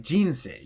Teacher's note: it has this giant release of energy right after the beginning of the word and then tapers off. Odaka words have this sense of building up to a peak and then suddenly falling down. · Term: Tamadaka word